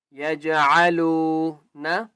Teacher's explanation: لام کو ایک الف کی مقدار کھینچ کر پڑھیں گے